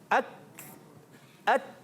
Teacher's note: شدت کے ساتھ آواز بند ہوتی ہے مگر سانس جاری ہو جاتا ہے